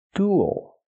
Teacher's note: this word uses a long oo sound like food and moon plus a dark L